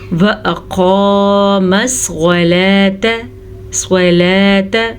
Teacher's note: صاد کو پر پڑھیں گے، صاد بھی ہمیشہ پر پڑھا جاتا ہے